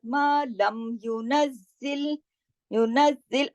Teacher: अब जाई पे तशदीद की वजह से हमने नज और जिल 2 दफा जाई को पढ़ा।